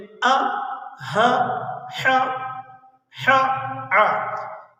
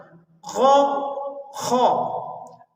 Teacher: آخری جو 2 حرف ہیں غ اور خ، ان کو ہم نے ہمیشہ پر پڑھنا ہے، ان کو ہم نے موٹا پڑھنا ہے